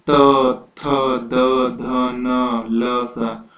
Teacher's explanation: तो आप देखोगे कि आपका जो जीभ है वो आपके दांत को टच करता है, सीधा आपके दांत को टच करता है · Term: दंत्य वर्ण